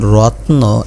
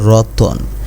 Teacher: রত্নর মধ্যে তর পরে কিন্তু অ নাই। আর রতনের মধ্যে তর পরে অ আছে। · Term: মধ্যসরাগম